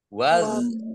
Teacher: Jadi jangan hun, jangan pendek gitu, tapi hunnya ditahan